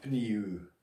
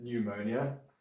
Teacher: And there you don't pronounce the P. It's not pneu.